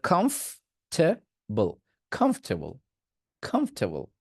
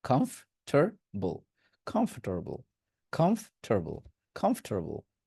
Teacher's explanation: কমফ টে বলতেন, ওখানে টে না বলে বলবেন টার